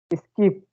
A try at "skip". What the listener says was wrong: So it's skip. Don't put much pressure on s. Skip. Just easily.